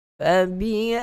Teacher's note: ya mati sebelum dia berbaris di atas. Itu kita sebut sebagai hukum bacaan lin, bacaan yang lembut.